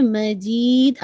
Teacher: دال پہ قلقلہ واضح ہو